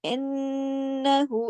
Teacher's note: इस पे हमने अकमल गुन्ना किया नून के ऊपर शद की वजह से। अब देखिए इन्नहु, हाय जमीर है ना, گول ہا ہائے ضمیر ہوتا ہے، اور اس کو ہم نے دیکھا کہ اس کے دونوں طرف حرکت والے حروف ہیں، تو یہ مد صلہ صغرا بن گئی، ٹھیک ہے۔